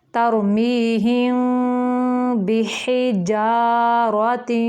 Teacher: تَرْمِیہِم، را موٹا ہے، ترمیہم، یہاں پہ میم کے بعد با آ گیا تو یہاں پہ اخفاء شفوی کا قاعدہ ہے، تو تھوڑی دیر میم کو با میں ملا کے لمبا کریں گے